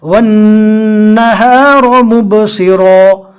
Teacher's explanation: رو, صاد اور یہ والا رو تینوں پور پڑھیں گے